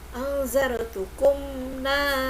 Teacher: mim sukun terbaca dengan jelas. Hukum bacanya adalah izhar syafawi.